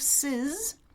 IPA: sɪz